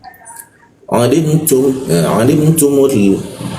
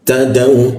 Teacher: Tadau, ta biasa, ta lidahnya ujung lidah agak lemah sehingga udaranya sedikit bocor